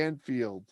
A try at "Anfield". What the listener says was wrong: anfield not Enfield anfield with an a